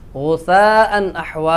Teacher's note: جما غثاء أحوى غثاء نحوا غثاء أحوى میں مد متصل ہے، حرف مدہ کے بعد حمزہ اسی کلمہ میں ہے، اس کو مد متصل کہتے ہیں، اس کو 3 الف لمبا کریں گے